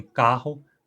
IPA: kahʊ